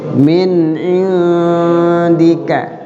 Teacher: min ada nun mati ketemu ain, idhar, nunnya dibaca jelas